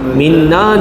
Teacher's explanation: Dengung dua harakat. Minna nun sabdu wajibul ghunna. Ya. Dengung juga dua harakat.